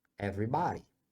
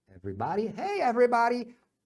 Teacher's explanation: todo mundo fala everybody com som de a bem aberto